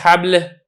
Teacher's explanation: آپ کی زبان اوپر کی طرف نہیں اٹھی ہے تو اسی لیے جو لام ہے یہ لام باریک رہا ہے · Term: استفال